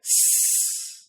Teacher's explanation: If you do that exact same thing, but instead you say s, you'll find that there is no buzzing. S is the unvoiced version of z.